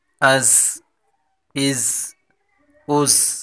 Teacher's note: حمزہ زا زبر از، زا سیٹی والا حروف ہے، تیزی کے ساتھ پڑھیں گے